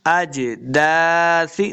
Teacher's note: मिनल अजदासी, अजदासी, दाल के आगे अलिफ है, इसको लम्बा करेंगे। सा को नरमे के साथ पढ़ना है, सीटी की आवाज़ नहीं आनी चाहिए।